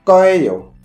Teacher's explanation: le yé, lorsque les Coréens parlent, il est très souvent réduit à e. Du coup, ce 거예요, en réalité, sa prononciation est proche de 거예요.